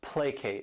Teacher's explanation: This word has 2 syllables and the stress is on that first syllable